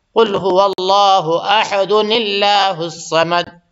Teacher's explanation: یہاں پہ نہ قلقلہ ہوگی اور نہ یہ اللہ پر ہوگا بلکہ اللہ باریک ہوگا، کیونکہ اس سے پہلے زیر ہو گیا۔ تو یاد رکھیے گا، قرآن کو اگر وصل کرتے ہیں، ملا کے پڑھتے ہیں تو اس کے آواز میں تھوڑا فرق آ جاتا ہے۔